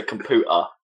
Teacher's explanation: that still has a fair bit of a tea in there it's kind of a glottal stop isn't it